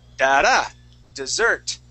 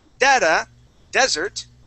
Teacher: this is dessert with the accent at the end